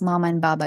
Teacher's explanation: labial sounds, bilabial sounds and like you don't actually need to gain control of your tongue and other uh uh other organs of articulation.